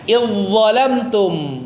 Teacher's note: Zalnya melebur sempurna ke huruf dha-nya ya. Idgham kamil.